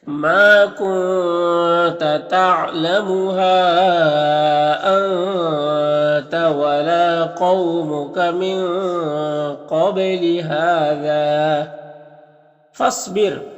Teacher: صاد حروف مستعلیہ میں سے پر پڑھیں گے، اور یہ ساکن حرف ہے، تو پیچھے والے متحرک حرف فا سے مل کر پڑھا جائے گا، یہ الف مدہ کو نہیں پڑھیں گے۔